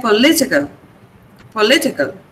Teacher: The stress is on Lee.